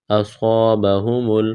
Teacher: صاد کو موٹا کرنا ہے، سیٹی کی آواز پیدا کرنی ہے، الف مدہ ہے، الف کے برابر کھینچنا ہے.